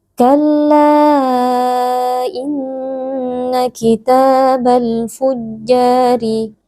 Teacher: jelas Kalla Inna kitabal fujjari di sini ada mad thaobi'i yaitu ada Alif yang sebelumnya berharakat fathah dibaca panjang dua harakat